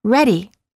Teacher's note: Instead of saying ready, we say ready. It's the sound made with the tip of the tongue quickly tapping the gum ridge. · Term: fast D